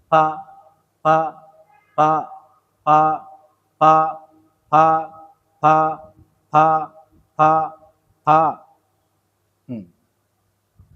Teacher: এই মাখরজে ফায়ের উচ্চারণটা হয়। উপরের দাঁতটা নিচের ঠোঁটের সাথে লাগাই দিয়ে ছেড়ে দিবেন।